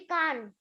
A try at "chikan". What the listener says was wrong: No, we pronounce it as chicken only, not chikan.